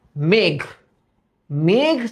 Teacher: মেঘ তো আমি একবারই উচ্চারণ করি এবং উচ্চারণটা টানা যায় না আটকে যায় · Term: বদ্ধ অক্ষর